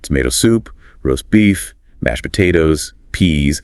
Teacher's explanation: when orders the stress falls on the food items · the stress falls on the food items. Tomato soup, roast beef, mashed potatoes, peas, and as we saw before, in compound food names, the stress usually on the second word, like roast beef.